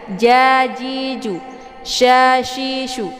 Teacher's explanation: letaknya dia di tengah lidah, sejajar dengan huruf ja